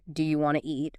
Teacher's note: Sometimes sounds are dropped entirely like the T often disappears in want to